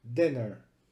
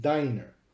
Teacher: However, in the word diner, D-I-N-E-R, since there is only one consonant in between the vowels, the first vowel is considered long and the last vowel is considered short